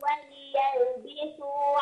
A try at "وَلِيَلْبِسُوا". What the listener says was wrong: قل وليلبسوا أبين الكسر وليلبسوا